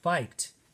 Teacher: the d says the t sound